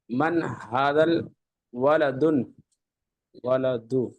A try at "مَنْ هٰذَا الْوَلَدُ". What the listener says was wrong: الف لام لگا ہوا ہے تو ہادہ کے ساتھ ملا کے پڑھیے گا نا.